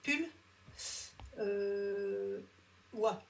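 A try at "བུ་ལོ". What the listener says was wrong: Alors maintenant, après, tu peux plutôt dire bullois et ça sera mieux. franchement, si vous dites pullois plutôt que bullois, pour moi, ça va Par contre, là, si tu disais pulpa, là, ça irait pas. Parce que là, effectivement, là, faut vraiment savoir que c'est wa. maintenant, pull, bulle, bon, ok, c'est pas très grave, quoi.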